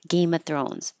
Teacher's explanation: So the K just stops like Game of Thrones.